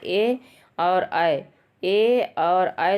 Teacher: ए और ऐ दोनों का उच्चारण स्थान होता है कंठ और तालु